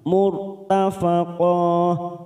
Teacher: ra sukun kita baca tafkim karena didahului dhamma